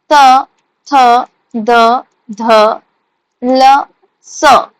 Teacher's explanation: दंत से निकलने वाली दात से निकलने वाली शब्द ठीक है मतलब हमारे जो टंग है जो जीवा है वो दंत में जाके टच कर रहा है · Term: दंत्य